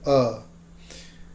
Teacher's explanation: the uh is the schwa sound the most common vowel in english just a neutral uh